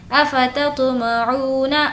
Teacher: عو کو کھینچیں گے کیونکہ واو مدہ ہے